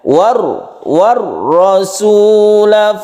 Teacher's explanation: Al bertemu dengan ra kita sebut dengan Idgham Syamsiah idgham artinya masuk artinya hal ini tidak dibaca langsung masuk ke huruf ra tasydid ra sehingga muncul tasydid Syamsiah artinya rak ini termasuk huruf-huruf Syamsiah